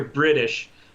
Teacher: there really is this soft T sound that is you know essentially a D sound